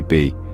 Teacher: release a burst of air when we pronounce it try it place your hand on your throat and say B you'll feel a slight vibration which is your vocal cords at work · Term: voiced plosive